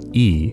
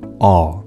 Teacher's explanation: you can also relate height to how close your tongue is to the roof of your mouth it's closer when you say the sound e than it is when you say a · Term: vowel height